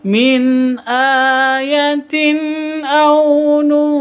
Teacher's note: Jadi bacanya samar disertai dengung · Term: ikhfa hakiki